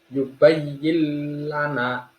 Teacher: Diperhatikan nun sukunnya tidak dibaca, bukan yubayyin lana, tapi langsung masuk ke huruf lam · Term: idgham bila gunah